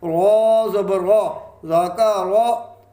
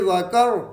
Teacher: را پہ زبر ہے، را کو پر پڑھا جائے گا، موٹا پڑھا جائے گا